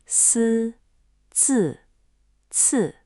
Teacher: When you say syllables like si, zi, or chi, that I is not the smiling E sound at all. It's a buzzy humming sound made by just relaxing your tongue where the consonant already is. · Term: almost invisible vowel